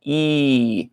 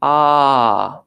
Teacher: e as opposed to AA which is a more open sound